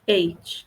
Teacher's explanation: Percebam que aqui no 8, eu praticamente não tenho som do H nem do T